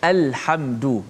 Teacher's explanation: lam qamariyah dibaca dengan izhar, maksudnya dijelaskan lam tu mati